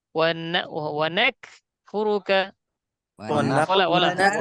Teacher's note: কাফ যখন যজম হয় তখন একটু বাতাস বের হবে